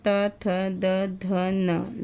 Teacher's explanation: दंत से त वर्ग का उच्चारण होता है